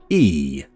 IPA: iː